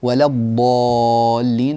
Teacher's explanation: الضاد تحتاج الى ان تملا بها الفم حرف اطباق واستعلاء